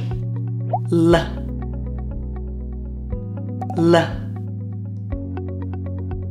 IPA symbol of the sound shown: l